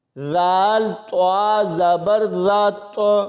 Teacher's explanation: ذال کو طا کے ساتھ ملائیں گے تو یہاں پر کلکلہ ہوگا